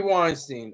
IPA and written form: ˈwaɪnstiːn (Weinstein)